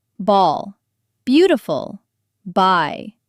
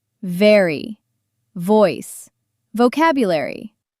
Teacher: B. Your lips press together and release. Ball. Beautiful. Buy. V. Your upper teeth touch your lower lip and vibrate.